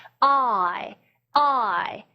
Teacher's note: 아 하고 이는 상당히 다른 모음이기 때문에 갑자기 뚝 떨어지면 변화가 급격하잖아요. 그래서 아에서 이로 아주 부드럽게 넘어가시라는 얘기예요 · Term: 이중 모음